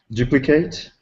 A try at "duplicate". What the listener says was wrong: Duplicate. Duplicate. Not. You're reading with your eyes. I want you to read with your ears. Duplicate. Duplicate. You keep saying A. It looks like an A, but it's pronounced as an I. Kit. Kit. Duplicate. The reason I'm saying that is because if you change it to a verb, it's duplicate. I'm going to duplicate this. To duplicate. If it's a noun, it's duplicate.